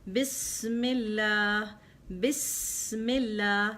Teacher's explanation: You have to bring the hissing sound of the seen.